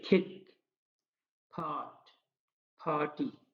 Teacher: Aspirated का मतलब ये है कि यहाँ थोड़ा सा ह की साउंड ऐड हो जाती है और ये शुरू में इस तरह बोला जाता है, जैसे खिक, फाट, फाटी।